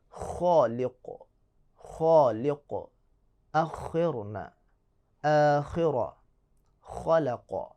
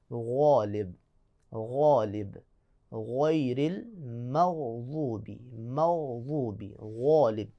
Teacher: اب یہ خواہ ہے، اس کو موٹا پڑھیں گے، جو غین ہے اس کو موٹا پڑھیں گے، لیکن فرق یہ ہے، دونوں میں فرق یہ آپ نے ذہن میں رکھنا ہے، دونوں میں فرق یہ ہے کہ خواہ میں خراش کی آواز پیدا ہوگی، غین میں خراش کی آواز پیدا نہیں ہوگی۔ مثال کے طور پہ غالب، غالب، غیر المغضوب، مغضوب، غالب، دونوں کو موٹا پڑھیں گے۔